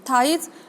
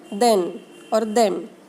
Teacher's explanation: Passive articulator is upper inner part of the teeth and active articulator is the tip of the tongue. While making sound th and the, I am touching my tip of the tongue to the upper inner part of my teeth ridge. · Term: dental